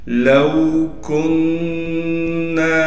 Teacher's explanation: لو کننا، کاف کو نون سے ملائیں گے، نون میں تشدید ہونے کی وجہ سے غنہ کیا جائے گا، اور نون کے بعد الف حروف مدہ میں سے ہے، لہٰذا اس کو بھی کھینچیں گے.